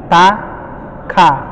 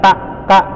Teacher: ka ada ahnya dikit. Jadi nggak ta, ka, itu kurang.